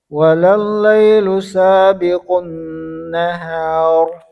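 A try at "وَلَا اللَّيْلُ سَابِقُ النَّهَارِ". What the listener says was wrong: Ya, tadi huruf sinnya dibaca tebal. وَلَلَّيْلُ ya. Tadi tahan. Jadi sabiqun, ya.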